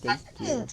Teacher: You replace the T. replaces the TH with a D and just goes thank you.